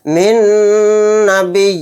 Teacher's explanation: نون ساکن کے بعد نون آ گیا تو یہاں پر ادغام مع غنہ کا قاعدہ ہوگا۔ نون پر تھوڑی دیر آواز کو روک کر غنہ کریں گے